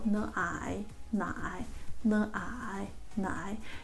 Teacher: it is 3rd tone, okay? So your voice need to go down first, then goes up, all right?